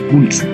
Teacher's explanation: La letra P representa un fonema oclusivo labial sordo de pulso.